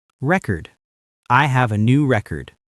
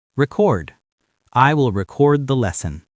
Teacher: As a noun, the stress is on the first syllable, record. As a verb, the stress is on the second syllable, record.